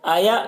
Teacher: یہاں پر حمزہ ساکنہ ہے، جھٹکا لگے گا